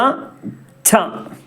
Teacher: ചന്റെ കൂടെ ഒരു ഹാ കൂടുന്ന പോലത്തെ രൂപത്തിൽ പറയുക